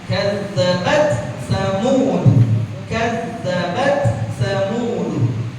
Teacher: Tak sukunnya karena dia sukun, jadi wajib dibaca hams.